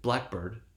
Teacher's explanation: And what we've just seen when we have a compound such as blackbird, we have blackbird, right? That syllable that follows the primary stress, right, bird, will receive secondary stress.